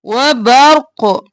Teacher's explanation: را ساکن اور موٹا پڑھیں گے، قاف ساکن ہو جائے گا تو قلقلہ ہوگا